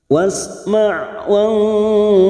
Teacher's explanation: Ikhfa hakiki kita samarkan bunyi nun sukun 3 harokat